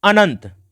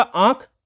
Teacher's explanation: अनुस्वार का उच्चारण केवल नाक के द्वारा होता है, और यदि अनुनासिक पूछ रहा है तो उसका उच्चारण होता है नाक और मुख दोनों से